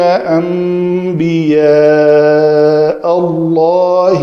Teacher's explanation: نون ساکن کے بعد با ہے تو اس نون کو میم سے بدل کر پڑھا جائے گا. اس کو اقلاب کا قاعدہ کہتے ہیں.